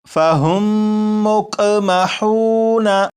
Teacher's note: تو پورے قرآن پاک میں اگر کسی بھی لفظ میں آپ دیکھیں کہ میم ساکن ہو، میم ساکن کے بعد دوسری میم ہو تو وہاں پر غنہ کر کے ہی پڑھیں گے